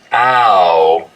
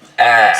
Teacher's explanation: Yous are the only people in all of North America that smooths the mouth diphthong, except for maybe Chicago sometimes. The smoothing is when you take a diphthong, like ow, and smooth it out so it's just one sound